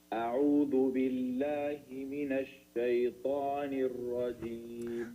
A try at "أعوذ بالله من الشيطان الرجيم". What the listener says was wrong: So the sheen, you have to make it clear that, you know, that hums, you know, and a'udhu, you pronounce the dal. I heard it dal. So a'udhu, your tongue has to be in the front, touching the upper teeth. You know, a'udhu.